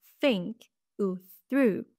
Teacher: chez le TH sourd les cordes vocales ne vibrent pas et il y aura un son intermédiaire entre un F et un S